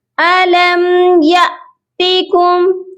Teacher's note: حمزہ ساکن کو جھٹکا دے کر پڑھا جاتا ہے